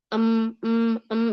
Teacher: Karena enggak semua aliran suara lewat bibir. Untuk mim em mem itu ada lewat hidung